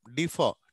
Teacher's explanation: last లో ఆర్లన్నీ పలకనే పలకం మనం